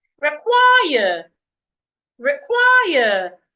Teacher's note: I'm stressing the second syllable.